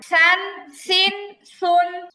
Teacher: জিহ্বার আগা উপরের দুই দাঁতের আগার সাথে লাগবে। হ্যাঁ, একদম পাতলা করে নরম করে উচ্চারণ হবে। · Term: সায়ের উচ্চারণ